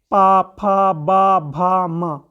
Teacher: पा ओष्ठ से बोला जा रहा है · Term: पा वर्ग